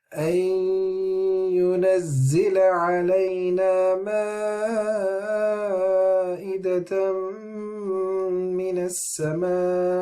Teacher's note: we are stretching the med, the 4 haraka, and then we're stopping on the hamza. This is when the med happens, when end on the med as well.